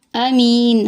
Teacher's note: امین، حمزہ ہے کیونکہ یہ الف کے اوپر جب زبر آ جائے تو وہ حمزہ بن جاتا ہے، حمزہ ہے، تھوڑی سختی سے پڑھیں گے۔ می پہ یا مدہ ہے، یا ساکن سے پہلے زیر ہے، نون کے نیچے زیر کو وقف کی صورت میں جزم سے بدل دیں گے۔